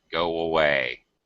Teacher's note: you can definitely hear a w sound there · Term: glide